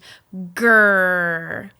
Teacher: So what we're looking for here is a strong, sustained grr. GR, that blend, it gets the back of the tongue lifted, which sets them up for R.